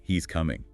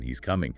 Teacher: Intonation changes the statement, he's coming, into a question, he's coming.